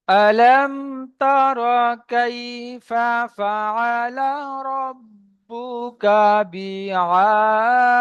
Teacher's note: তো এখানে আলামকে আমরা গুণা করলাম না কোনো রকম ভাবে। মিম সাকিনের পরে তা এসছে, ইজাহারের স্বাভাবিক, গুণা করলাম না